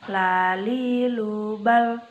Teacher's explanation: Huruf la atau lam keluar dengan menyentuhkan lidah terdekat dengan langit-langit bagian depan. La posisinya berada di depan huruf ro. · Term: huruf lam